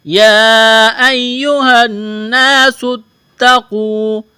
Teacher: نون کو 1 الف کے برابر کھینچنا ہے، کیونکہ یہاں الف سے پہلے زبر ہے، الف مدہ ہے، 1 الف کے برابر کھینچنا ہے۔ سین میں سیٹی کی آواز پیدا کریں گے، سین کو تا کے ساتھ ملانا ہے۔